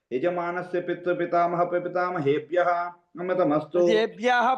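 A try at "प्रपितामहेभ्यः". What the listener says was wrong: ప్రజేభ్యः అంటున్నాను, ఒత్తు చెప్పాలి సార్ అక్కడ. పితృపితామహ ప్రపితామహేభ్యः అమృతమస్తు.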